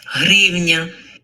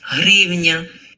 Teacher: It's almost going hrivna. To me, at least, I'm hearing somewhere between a h and a g.